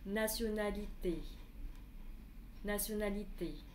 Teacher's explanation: T, nó dài hơn. Le T est plus long que le reste, en fait, du mot.